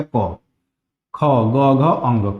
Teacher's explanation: कंठ से जो बोला जाता है उसको पहले लिखा गया क, ख, ग, घ, अंग। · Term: क वर्ग